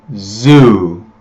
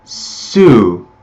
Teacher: The main difference is that Z makes my throat vibrate.